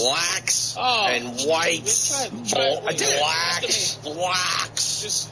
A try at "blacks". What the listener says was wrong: You're saying it like brack almost. B-L-A-C-K-S. Just say black.